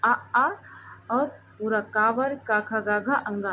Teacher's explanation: अंगा का हम आगे सीखेंगे कि इसका उच्चारण स्थान कंठ तो होता ही है, साथ में नासिका भी होता है।